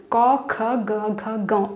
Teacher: जब हम इनका उच्चारण करते हैं तो हमारे कंठ से इनका उच्चारण होता है